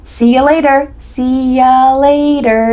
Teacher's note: A common reduction for see you later is see ya later. The word you changes to ya.